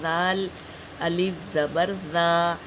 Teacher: زال کو بھی زبان کی ٹپس ڈال کر دونوں دانتوں کے بیچ میں ادا کریں گے